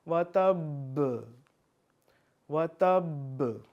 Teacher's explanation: اب آواز میری لوٹ رہی ہے، واپس آ رہی ہے، کیونکہ با پہ جو قاعدہ لگ رہا ہے وہ ہے قلقلہ